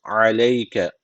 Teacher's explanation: ayın boğazdan arkadaşlar unutmayın